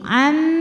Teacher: Nun masuk ke mim am disertai dengungan Kenapa disebut Kamil karena masuknya Nun ke mim sempurna jadi Nun sama sekali sudah tidak meninggalkan sifat apapun ketika masuk ke huruf mim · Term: amunah Kamil